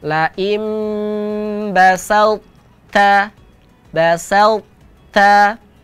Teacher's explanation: huruf tho masih tebal tetapi tidak boleh Qalqalah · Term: idgham mutajanisain